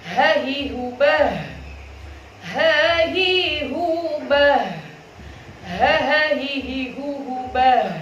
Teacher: ada nafas yang mengalir, dan kita juga ada rikhwah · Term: huruf ha